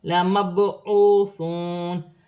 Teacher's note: با ساکن ہے، با حروف قلقلہ میں سے ہے، قلقلہ پیدا ہوگا